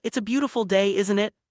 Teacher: The speaker's voice drops at the end, showing they expect agreement. This is common in friendly conversations where you're just confirming something you believe to be true. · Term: falling intonation